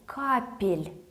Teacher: Капля, we drop the ya, we are left with couple, we add ye in between, and we don't forget about keeping the L soft. So, капель.